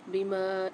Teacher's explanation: میم کے ساتھ الف آ رہا ہے تو یہاں پر میم کو ایک الف کی مقدار کھینچ کے پڑھیں گے